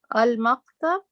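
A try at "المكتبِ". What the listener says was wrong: What is the harakat al-maktabu? Read the harakat of the last letter.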